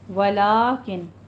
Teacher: اس کو ولکن نہیں پڑھنا ہے، ولیکن یہاں پہ فتحہ قائمہ ہے، الف مدہ کے برابر ہوتا ہے، اس کو 2 کاؤنٹ کرنے ہیں